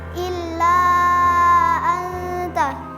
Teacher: Karena ada huruf mad alif bertemu dengan huruf hamzah di lain kata dibaca empat atau lima harakat. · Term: mad jaiz munfasil